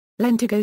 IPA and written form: lɛnˈtaɪɡoʊ (lentigo)